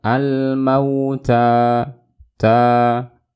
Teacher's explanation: Kemudian ada alif lam qamariyah, dan di sini kita bisa melihat ada ta berbaris fathah. Setelahnya alif mad tabi'i dibaca 2 harokat. Ingat, hanya 2 harokat.